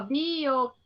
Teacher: O que é o mais forte? É a antepenúltima, tá? Também é proparoxítona.